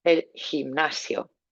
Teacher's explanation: nice h at the back of your throat on there for you too